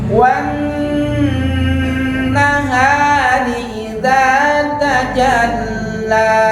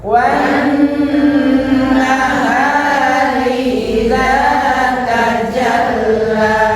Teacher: Wa tekan ke nun, kemudian ditahan di nunnya, jangan terburu. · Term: alif lam syamsiyah